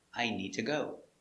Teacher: You're connecting two verbs with to. To is not stressed, so we pronounce it ta.